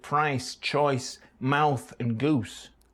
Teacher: many vowels, which are monophthongs in surrounding accents, are quite extreme diphthongs in Manchester. By that I mean the tongue travels quite a way between the beginning and end of price, choice, mouth and goose.